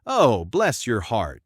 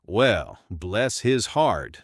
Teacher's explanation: High, sweet, oh, bless your heart is sincere. A low, slow, well, bless his heart means he's an idiot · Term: intonation